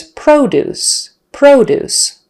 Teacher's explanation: exactly the same way p-r-o-d-u-c-e so the noun is produce produce syllable stress on the first syllable produce with a long o o produce the verb is produce actually we kind of use